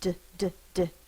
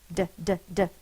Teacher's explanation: my tongue is tapping the top of my mouth like a drum